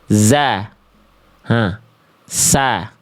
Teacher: Sin, ujung lidah sejajar dengan ujung gigi sari bawah.